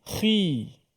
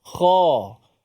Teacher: Cuma huruf kha ni apabila dia berbaris depan ataupun baris bawah lah, dia punya ketebalannya kurang sikit. Tak samalah macam baris atas. Kha. Bila baris bawah, khi.